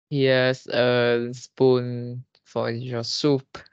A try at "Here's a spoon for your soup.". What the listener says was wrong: Okay, here is a spoon for your soup.